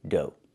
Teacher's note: Make the long O like no and go, and the GH is silent.